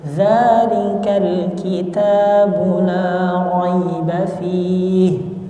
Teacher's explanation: huruf ta itu ada hams, tapi hamsnya sedikit